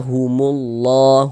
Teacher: Jadi huruf lam yang di tengah nih, huruf lam jalalahnya itu kita baca tebal, kita baca tafkhim